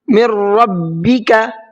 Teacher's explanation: अब ये ख़त्म हो जाएगा, नून मिक्स हो जाएगा। तो जब हमने मीम को रा में मिलाया तो नून ख़त्म हो गया, यानी कि रा के अंदर मिक्स हो गया। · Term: इदगाम